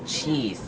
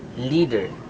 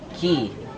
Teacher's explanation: this vowel is a long sound and tense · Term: front vowels